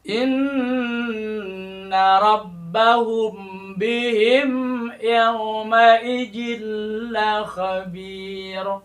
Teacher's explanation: huruf ba Itu adalah huruf yang dilahirkan dikeluarkan dari makhorijul huruf yaitu adalah bibir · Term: Ikhfa Syafawi